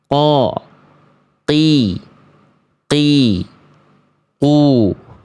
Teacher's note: Kalau teman-teman tepat melafalkan qaf seperti ini, dia akan tertahan nafasnya.